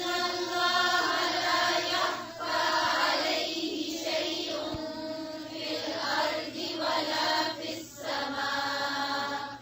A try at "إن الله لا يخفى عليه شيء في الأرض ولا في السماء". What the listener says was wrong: हमजा को वाज़े करें.